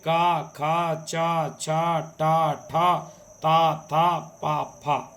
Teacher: ये अघोष वर्ण होते हैं। इनके उच्चारण में कोई कंपन नहीं होता।